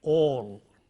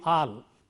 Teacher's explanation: The vowel here is a rounded vowel, it's a long vowel, so all. If you don't round your lips for this, you end up saying al.